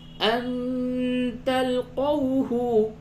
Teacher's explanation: نون ساکن کے بعد تا ہے، یہاں پہ اخفا ہوگا